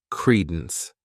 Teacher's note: this word has two syllables and the stress is on that first syllable